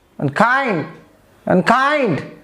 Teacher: the word like unkind the second syllable is stressed